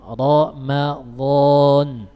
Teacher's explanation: Ra ini memiliki 2 cara membacanya. Bisa dibaca dengan tafkhim, yaitu punggung lidahnya naik ke arah langit-langit atas, dan bisa dibaca tarqiq, lidahnya normal.